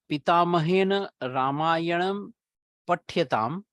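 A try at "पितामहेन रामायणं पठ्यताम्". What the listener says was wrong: Ekara is not coming out when your pronunciation. Pathyatam.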